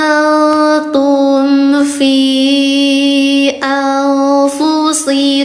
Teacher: I-nya ada lima dibacanya panjangkan lima harakat. Hukum tajwidnya mad jaiz munfasil